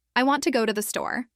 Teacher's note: the main stress falls on want, go and store. The words to and the are said more quickly and with less emphasis. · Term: stress timed, stress-timed